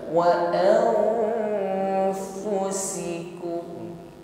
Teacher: Mengucapkan nun sukun disamarkan pada huruf fa, disiapkan pada makhraj huruf fa. Pertemukan ujung gigi dengan bibir bawah. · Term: ikhfa